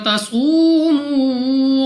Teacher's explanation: واو ساکن سے پہلے پیش واو مدہ دونوں کو 2 سیکنڈ تک کھینچ کر پڑھیں گے